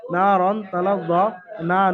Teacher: আলিফ মাদ্দা একালিফ পরিমাণ টান দিয়ে পড়তে হবে। আলিফের ডান দিকে নুনের উপরে জাবার এসছে, এবং আহ, নুন নুনকে একালিফ পরিমাণ টান দিয়ে পড়তে হবে, কারণ আলিফ মাদ্দার কায়দাটি নুনের সঙ্গে এসছে।